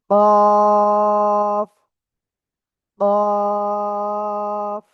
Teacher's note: জিহ্বার গোড়া তার বরাবর উপরে তালুর সাথে লাগিয়ে দুই নোক্তাওয়ালা কফ, চার আলিফটা নিয়ে পড়তে হবে।